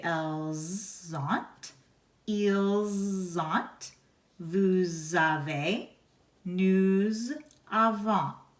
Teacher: All of the forms of avoir start with an A, lettre A, or an O, so all vowels. So therefore you connect the consonant, the S, to the vowel that comes after it. · the S of nous, vous, il, and elle is pronounced Z or Z when a vowel comes next. All of the forms of avoir start with an A, lettre A, or an O, so all vowels. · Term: liaison